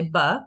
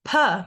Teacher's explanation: your voice box and you say bbbbbb and you say p your vocal folds vibrate on the B and they do not vibrate on the P